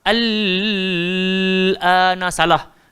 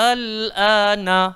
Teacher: Dia mesti bunyi a dulu baru masuk l. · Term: mad lazim kalimi mukhaffaf